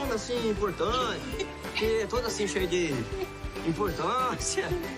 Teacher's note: Quando Malas Artes pronuncia as palavras importante e importância, é produzido o som do R retroflexo, que pode ser encontrado em pronúncias de palavras como porteira, carteira, cortar, entre muitas outras.